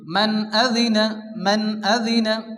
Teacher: এখানেও কিন্তু কোনো গুণনা হবে না, বিনা গুণনায় তাড়াতাড়ি পড়তে হবে। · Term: ইজহারে হালকি